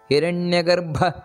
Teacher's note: ನೋಡಿ ಭಾ ಅನ್ನೋದು ಮಹಾಪ್ರಾಣ